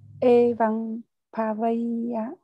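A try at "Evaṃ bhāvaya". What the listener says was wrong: E chữ E kéo dài ra Evang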